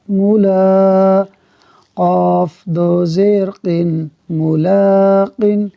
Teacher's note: میم پر حرکت ہے اس لیے نہیں کھینچا، لام پر کھڑی حرکت ہے اس لیے اس کو کھینچا ہے